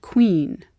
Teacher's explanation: The k in queen is slightly further back in the throat. The U pulls it that way.